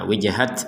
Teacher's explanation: Wijhat, nah, ada nafas sedikit keluar. Tapi kalau yang ini itu kalau berhenti maka dia akan terbaca sebagai huruf ha, seperti yang barusan itu.